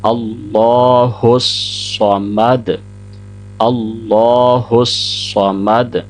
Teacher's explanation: آگے اللہ کے لام سے پہلے چونکہ حمزہ کے اوپر زبر ہے تو موٹا پڑھا جائے گا اللہ، پھر ہا کو صاد کے ساتھ ملایا جائے گا اور صاد بھی موٹا پڑھیں گے، ورنہ سین اور صاد کے اندر فرق نہیں رہے گا